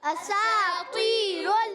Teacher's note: اساطیر یہ ہے الف نہیں حمزہ ہے، تو اس کو حمزہ کو کلیئر کریں گے. سین الف زبر سا، یہ علی مدہ کھینچیں گے، سین باریک سیٹی والا ہے. اور تو، یہاں تو موٹا رکھنا ہے.